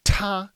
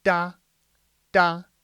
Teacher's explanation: when you say tah a lot of air comes out of your mouth but if I say da da there's no air coming out of the mouth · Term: aspiration